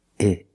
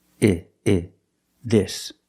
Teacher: When I say the word this for something singular, I use the short I sound, like is and in, I. The mouth is slightly open, I, and you make a short sound, I, this.